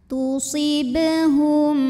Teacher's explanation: dibaca memantul dengan pantulan yang kecil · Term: qalqalah